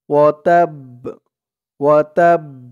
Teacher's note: ওয়াতাব, ওয়াতাব, একটু ধাক্কা খাবে বার আওয়াজটা। তাব্বাত ইয়াদা আবি লাহাবি ওয়াতাব।